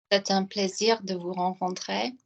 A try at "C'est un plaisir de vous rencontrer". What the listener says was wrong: Close your mouth a bit. You're sounding like a primary school teacher or a TV presenter that's on a game show. Just go like this for me. Close your lips together. Like make it really lazy.